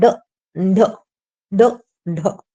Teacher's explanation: बोल कर देखिए आप ड और ढ एकदम से मसूड़ी से मिलेगी मतलब जो अपना जीभ का आगे का हिस्सा होता है जो कोन होता है कोना होता है वो अपने ऊपर दांतों के अंदर के साइड टच होकर एकदम से झटके से नीचे आएगा ड ढ ड ढ ठीक है इसे द्विगुण तडनजात भी कहते हैं और उत्क्षिप्त व्यंजन भी कहते हैं। · जब हम बोलते हैं ना तो हमारी जो जीभ है ऐसा महसूस होता है हमें जैसे जीभ को एक झटके से नीचे गिराया जाता है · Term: उच्छित व्यंजन